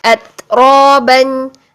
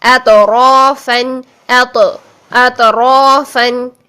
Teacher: ता साकिन में हमने आवाज को बंद किया और सांस को जारी किया